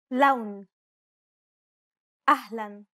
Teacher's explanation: unlike the English L the tongue is ever so slightly flatter and straighter in Arabic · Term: Arabic l sound